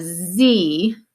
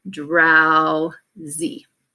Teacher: it's an O W drow and then on the second part we have Z which is actually an open syllable but we spell it with an S why because that s is voiced